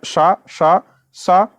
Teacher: उच्चारण के समय वायु घर्षण करती हुई निर्गमित होती है जिससे ऊष्मा उत्पन्न होती है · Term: ऊष्म संघर्षी व्यंजन